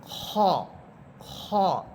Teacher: খ মোটা হরফ, আওয়াজটাকে মোটা করে পড়বেন, মুখ ভরে উচ্চারণ করবেন